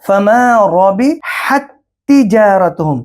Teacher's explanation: یہ دو تا ہیں، پہلا تا ساکن ہے، دوسرا تا تشدید والا ہے، تو ساکن تا کو، ساکن حرف کو تشدید والے حرف کے اندر داخل کریں گے ، یہی ہے ادغام مثلین،